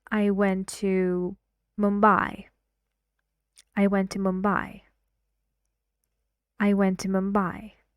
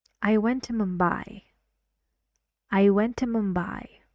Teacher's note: I say the stressed part louder and longer but the intonation is falling